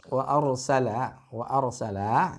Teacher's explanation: ra-nya ar terbaca harus dengan tafkhim, bukan wa arsala, ya, tapi terbaca dengan harus tafkhim.